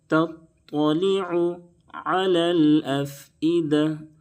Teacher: دونوں جگہ عین کو درمیانی حلق سے ادا کریں، بالکل صاف ادا کریں گے تاکہ حمزہ سے نہ بدلے